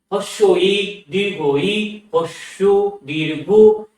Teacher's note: এগুলো উচ্চারণ করতে গেলে আমাদের জিহ্বা একদম সর্বোচ্চ উচ্চতায় উঠে যাচ্ছে, জিহ্বা একদম মুখের মধ্যে সবচেয়ে উঁচুতে উঠে যাচ্ছে জিহ্বা। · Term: উচ্চ স্বরধ্বনি